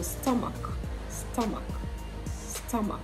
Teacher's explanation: You have the ah sound, and then you have the schwa sound at the end.